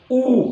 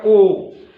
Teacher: आप बोलेंगे दोनों होठ थोड़ा सिकुड़ रहे हैं, गोलाकार बन रहे हैं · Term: वर्तुल